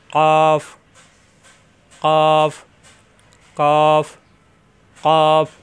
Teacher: কফ জিহ্বার গোড়া উপরে তালুতে লাগবে